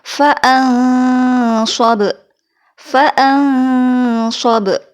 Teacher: Jangan lupa untuk menahan gunnah selama 2 harokat.